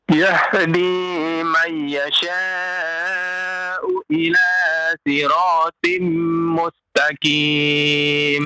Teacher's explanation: Huruf haknya yang tebal. Yahdi ya, bukan huruf hak kecil ya. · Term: ha besar